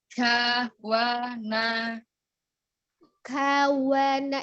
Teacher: Huruf kaf memiliki sifat al-hams ya. Ada aliran udara ketika mengucapkan huruf K